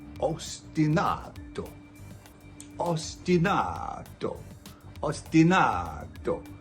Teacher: You put the emphasis on the third syllable.